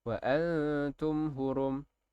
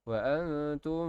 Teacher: Jadi baca dia mesti izhar, mesti jelas. Mim mati tu mesti jelas dan tidak ada dengung. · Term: izhar syafawi